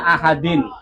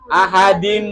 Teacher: tulisannya ahadin tapi bacanya ahadim yaitu tanwinnya masuk ke ke mim